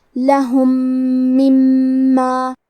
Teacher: یہاں حکم ہے ادغام متماثلین صغیر، ہمیں پہلے میم کو دوسرے میم میں ملا کے ایک ہی میم غنہ اور تشدید کے ساتھ پڑھنا ہے، لہم مما۔ کلمت مما میں میم پہ تشدید ہے، تو ہم دو حرف کے برابر میم کو پڑھیں گے۔